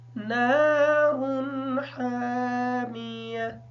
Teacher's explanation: نارن کی جو نون ہے اس کو تھوڑا سا لمبا کر کے پڑھیں گے کیونکہ اس نون کے بعد الف ساکن ہے، اور جو یہ را ہے را کے اوپر حرکت تنوین کی ہے، لیکن تنوین کا غنہ اس وجہ سے نہیں کریں گے کیونکہ اس را کے بعد حروف حلقی میں سے ح آ گیا ہے